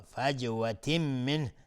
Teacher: فی جیم قلقله میخواد اینجا. فجوة منه تنوین بهش میم ادغام با غنه. نون ساکن بهش های دو چشم اظهار حلقی.